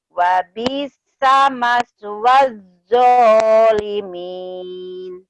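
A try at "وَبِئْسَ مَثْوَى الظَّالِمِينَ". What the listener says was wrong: Bagus, tapi di bi-nya dihentakan, Teh ya, dikagetin. Wa bi'sa, ya bi-nya saja yang dihentakan. Wa bi'sa maswa.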